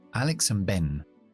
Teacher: Y la D, como yo tengo una B después, es muy difícil hacer and, ben, dos explosiones uno detrás del otro. Así que voy a dejar esa D en una parada glotal que se llama freno la voz. Ben, Alex and Ben, una mini pausa, freno la voz y continúo con Ben.